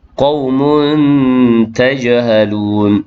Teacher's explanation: Kemudian qaumun tajhalun, ada dua di situ, satu tanwin bertemu dengan ta, ikhfa hakiki dengan 2 harakat